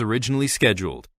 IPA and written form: əˈrɪʤɪnəli ˈʃɛdjuːld (originally scheduled)